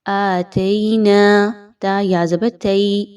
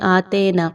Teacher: تا یا زبر تی یائے لین، یا لین کی ادائیگی بہت کلیئر پڑھنی ہے